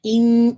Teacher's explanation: آپ nasal cavity میں لے جا کر 2 کاؤنٹ ہولڈ کریں گے، ناٹ ان، یہ ساؤنڈ آنا چاہیے، ان یہ وائبریشن سے ساؤنڈ ان یور نوز۔ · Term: اکمل غنہ